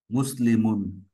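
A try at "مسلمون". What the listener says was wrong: Good.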